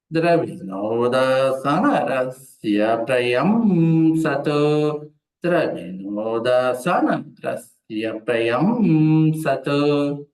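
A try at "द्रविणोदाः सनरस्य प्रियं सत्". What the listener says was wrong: మీరు ద్రవిణోదా సా పైకి అంటున్నారు. సా నా పైకి అనాలి. ద్రవిణోదాసనరస్య ప్రియం సదు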